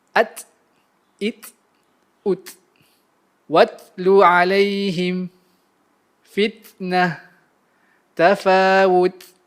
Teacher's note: Apabila ia dalam keadaan sukun, ia akan menghasilkan bunyi seperti bisikan atau dikenali sebagai al-hams.